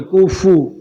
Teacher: کاف پیش کو، فا پیش فو کوفو، دونوں پہ ہونٹ گول ہوں گے